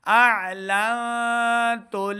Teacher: نون ساکن کے اوپر ہم نے اخفاء یعنی غنہ کر کے پڑھنا ہے